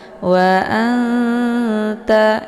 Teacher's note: sini ada nun sukun bertemu dengan huruf ta ya cara bacanya nunnya disamarkan siap-siap masuk ke huruf ta wa anta jadi nunnya tidak dibaca